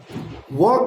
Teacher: वकारस्य दंतोष्ठम व का उच्चारण स्थान दंत और ओष्ठ है अर्थात व बराबर उ जोर अ।